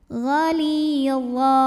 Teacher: Ghalidha, wa mad iwad, sebab ada baris tanwin fathah yang diwaqafkan atau diberhentikan. Maka cara baca tanwinnya ini adalah diubah dulu jadi fathah dan panjangkan dua harokat